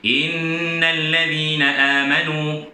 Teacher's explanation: Cuba tuan-tuan tengok, saya punya in tu 2.5, panjang sikit daripada a dengan nu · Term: wajibul ghunnah